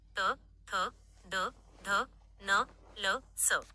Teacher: दंत्य. जिभेचा दातांना स्पर्श होतो.